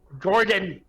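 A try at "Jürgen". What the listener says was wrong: Just because it's spelled with a J doesn't mean it's an English pronunciation. It's Yergin. It's not Jerrigan, it's Yergin.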